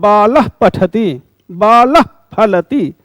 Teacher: पाफा के पहले जो उच्चारण हो रहा है अर्ध विसर्ग का, उसे उपध्मानी कहते हैं।